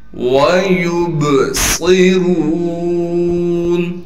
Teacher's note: صاد کو موٹا پڑھیں گے، صاد میں سیٹی بھی ادا کریں گے